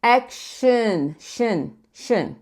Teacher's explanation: A gente quer, como eu falei, quer grudar o som do sh com o n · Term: schwa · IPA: /ə/